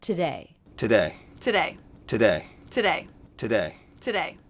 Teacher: I'm noticing that these T's are all true T's and not flat T's that's because the beginning sentences so we're not going to reduce · always the first syllable is reduced to the schwa sound but I'm noticing that these T's are all true T's and